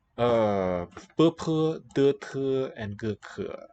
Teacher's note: There's complete closure of the air passage there. And these guys are labials, made with the lips. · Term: stop sounds